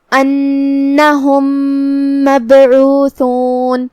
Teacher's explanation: یہاں ادغام متماثلین صغیر ہے۔ ہم یہ میم ساکن کو دوسرے والی میم میں داخل کر کے ایک ہی میم پڑھیں گے تشدید کے ساتھ۔